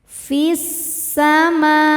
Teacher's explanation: Hukum alif lamnya adalah alif lam syamsiyah sebab alif lam menghadapi huruf syamsiyah yaitu sin. Cara bacanya dileburkan atau dimasukkan ke sin. Fis sama. Ma hukumnya mad tabi'i muqaddar sebab mim berharokat fathah panjang.